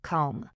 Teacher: The B at the end is completely invisible to your ears.